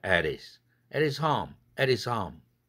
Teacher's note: H 날라갔죠? 그럼 t가 또 링크돼서 와야 되죠? is가 모음 혼자니까. · 그러면 at his가 됐죠? 그럼과 동시에 t는 플랩 돼야 되겠죠? 모음과 모음 사이 낀 결과가 됐으니까. 흐가 날아감으로써. At his가 아니라 at his.